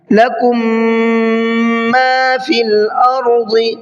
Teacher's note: ایک میم کے بعد میں دوسرا میم آ رہا ہے، اس قاعدے کو ادغام شفوی کا قاعدہ کہتے ہیں، یہاں پر بھی غنہ کر کے پڑھا جاتا ہے۔